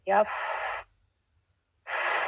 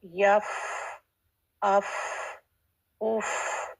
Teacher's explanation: فا پہ جب ساکن ہے لیکن فا میں ہمس ہوتا ہے